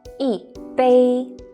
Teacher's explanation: when e is followed by a fourth falling tone e becomes the second rising tone · followed by the three other tones first tone flat second tone rising third tone down and up e becomes the fourth falling tone